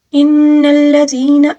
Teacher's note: نون مشدد کا غنہ، ٹھیک ہے، یہاں پر اس کی ادائیگی لازمی ہے